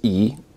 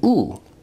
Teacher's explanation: remember that e is a high vowel but it's also a front vowel while u is a back vowel